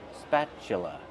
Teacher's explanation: the T is pronounced with the ch sound.